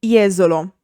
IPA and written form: ˈjɛzolo (Jesolo)